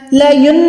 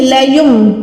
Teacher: تو جب بھی نون کے اوپر چھوٹی سی میم بنی ہوتی ہے، آپ نے اس کو نون کو نہیں پڑھنا بلکہ میم کو پڑھنا ہے گننے کے ساتھ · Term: اقلاب کا قاعدہ